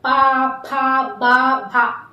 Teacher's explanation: पा वर्ग का कोई भी अक्षर आप बोलेंगे तो ऐसे नहीं बोल पाएंगे जब तक आपके होठ आपस में चिपकेंगे नहीं